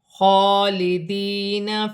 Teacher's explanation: خا پر کھڑی زبر ہے، ایک الف کی مقدار کھینچ کر پڑھا جائے گا